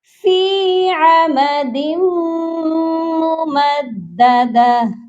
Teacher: last آیت پر بھی دال کو جب ہم میم سے ملا رہے ہیں تو ادغام کر رہے ہیں، یہاں پر میم مشدد ہے، اس پر غنہ لازمی کریے گا